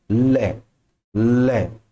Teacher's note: जीवा के दोनों पार्श्व से, मतलब अब बोल के देखो जरा मेरे साथ में, ले, ले, दोनों साइडों से हवा निकलेगी, साइड से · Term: पार्श्विक